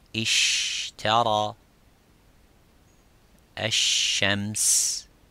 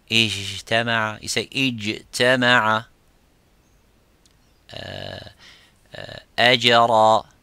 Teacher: The parts touch each other without leaving the gap. But the sheen has a gap, and that let the air slightly go.